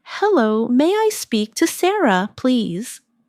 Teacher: Notice how may I sounds like Maya in fast speech.